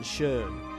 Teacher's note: first we have the high mid-front rounded vowel